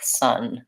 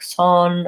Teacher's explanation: both of these words have the vowel schwa, which looks like that in this word.